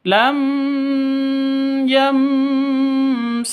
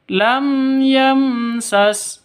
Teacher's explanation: mim mati bertemu dengan ya sama mim mati bertemu dengan Sin ini sama-sama bacaan harus jelas dan terang tidak boleh dengung